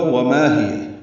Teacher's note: وما الف مدہ ہے، ما دو حرکات لمبا، ہی جلدی پڑھیں گے